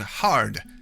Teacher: Ah is another unchanging neverbending vowel. It's not hard but it is in the word hard and that's what it always sounds like.